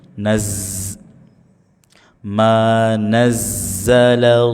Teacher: Naz zai berikan penekanan dan dia punya sifat saofir mendesis.